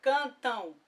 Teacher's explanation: Percebe que sai um som de O no final? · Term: dígrafos vocálicos